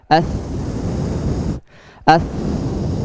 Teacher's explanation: Kemudian yang tsa mengeluarkan nafas. As. Ya, jadi masih mengeluarkan nafasnya. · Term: sifat hamas